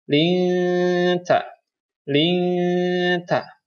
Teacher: nun sukun bertemu dengan huruf ta, maka dibacanya samar. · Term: ikhfa